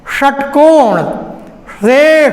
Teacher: मूर्धन्य श, मूर्धा से उच्चरित होने वाला, जैसे जिह्वा ऊपर की ओर जाए और उच्चारण हो